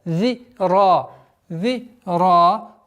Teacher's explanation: Обратите внимание на межзубное произношение звука заль. · Долгота в размере 2 огласовок фатха над буквой ра.